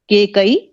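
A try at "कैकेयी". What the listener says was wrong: Her name is Kaikeyi, not Kekai. It is important because the word comes from Kekaya Pradesha. She belongs to Kekaya Pradesha and therefore her name is Kaikeyi. The Ekara gets a Vriddhi and becomes I.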